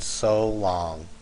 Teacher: an iambic, which is 2 syllables with a unstressed and then stressed